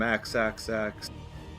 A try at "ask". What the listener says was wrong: For those people who don't pronounce the K and ask.